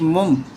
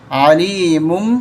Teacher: یہاں پر بھی آپ دیکھیں چھوٹا میم آپ کو نظر آ رہا ہے، یہاں پر بھی اقلاب کا قانون لگ رہا ہے۔ دو پیشوں میں سے ایک پیش پڑھیں گے اور میم کے ساتھ ملا دیں گے